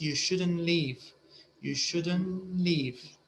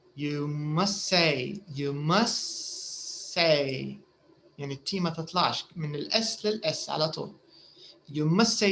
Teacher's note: we usually don't say the t before a consonant